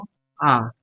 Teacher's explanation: ঠোঁটের উন্মুক্ত অনুযায়ী বিবৃত